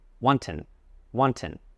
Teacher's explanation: With the word wanton, the stress is on the first syllable.